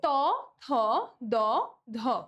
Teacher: জিভের ডগা উপরের পাটির দাঁতে লেগে, এই যে আমাদের মুখ্য বাক প্রত্যঙ্গটা আমাদের গৌণ বাক প্রত্যঙ্গে এসে লেগে বায়ুপথে বাধা সৃষ্টি করে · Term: দন্ত